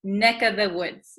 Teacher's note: usually this of the V sound kind of disappears because V's are hard to pronounce. · So we tend to say neck of the woods, This of becomes just the vowel sound, neck of the woods.